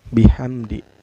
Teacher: mim sukun bertemu dengan huruf Izhar Syafawi yaitu dalya cara bacanya mim sukun nya dibaca secara jelas enggak boleh dengung